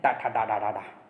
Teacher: टा वर्ग जो है वो मूर्धा वर्ग में आता है, मूर्धन्य व्यंजन होते हैं।